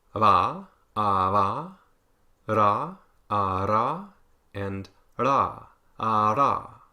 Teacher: If trills are like repeated plosives, then taps or flaps are the opposite. It's just one quick contact between 2 articulators.